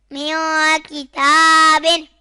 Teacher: میم نون زیر من، کاف زیر کی، میاقی، تا کھڑا زبر تا، میاقی تا، با دو زیر بن، میاقی تابن۔ یہاں نون ساکن کے بعد حرف اخفا میں سے کاف آ رہا ہے تو گنہ ہوگا، یعنی اخفا